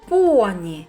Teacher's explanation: так п це твердий приголосний позначаємо однією рисочкою